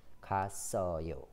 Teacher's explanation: S is connected to the vowel that comes after.